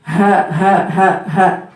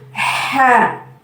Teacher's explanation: Kalau ha itu dari tenggorokan bawah ya. Ha. Kemudian kalau ha dari tenggorokan tengah, ha. Dia lebih neken ya.